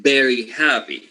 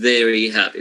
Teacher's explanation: That means that when you teach phonetics, this is one of the sounds that you need to put more emphasis on, because you will be having at the end students saying very happy using the bilabial V as instead of the labial dental V